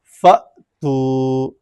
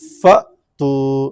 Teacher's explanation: تو حمزہ جو ہے جزم کے ساتھ جب اس کو پڑھیں گے تو جھٹکے کے ساتھ ادا کریں گے